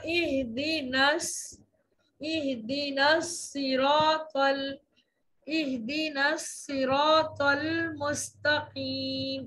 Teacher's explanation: तो नून को स्वाद में मिलाते हुए दोनों साकिन में से एक साकिन गिरा देंगे और वो होगा नून वाला साकिन गिर जाएगा, यानी ना से